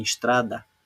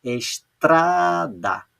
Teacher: Quando a sílaba tônica não é a última, e sim a penúltima, como em estrada, ela é chamada de paroxítona